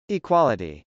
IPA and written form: ɪkwˈɑləti (equality)